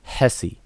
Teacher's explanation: Okay, so so again, like this H with a dot under it, it's a capital H in manual decodage. So this is an aspirated H, the one with a lot of air coming out your mouth as you enunciate this particular letter. So you say Hesse, as opposed to the lowercase h here will be a regular H that we would normally pronounce.